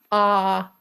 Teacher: It's pure. It's one position. And it's one shape inside. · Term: simple vowel ah